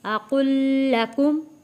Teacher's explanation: یہاں پہ قاف جو ہے تشدید والے لام کے ساتھ جڑے گا